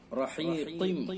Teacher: قاف کے نیچے دو زیر ہے، تنوین ہے، تنوین کے بعد یا واو میم نون میں سے میم ہے، لہذا ادغام ناقص بالغنہ ہوگا